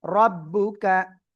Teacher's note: রর পরে জবর বা পেশ হলে র অক্ষরটা মোটা আওয়াজে পড়তে হয়।